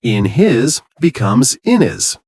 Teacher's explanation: Drop some H's in UK accents.